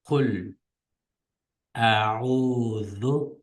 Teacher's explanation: bu yerdagi zal harfini o'xshashlab tilni tishlab chiqaramiz